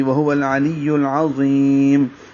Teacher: باریک پڑھیں گے اور میم ساکن پہ اظہار کریں گے، وقفاً، وقف کر دیں گے، پیش ختم ہو جائے گی، اب لمبا ہوگا، وقف ہوگا تو مد عارض للسکون بنے گی